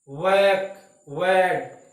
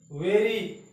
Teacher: वैक, वैड, तो यहाँ होठ की शेप राउंड हो जाएगी, जबकि वेरी इस तरह से आप बोलोगे या वेन बोलोगे तो होठ राउंड नहीं होंगे, होठ आपके फ्लैटन या कर्विकल रहते हैं। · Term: राउंडेड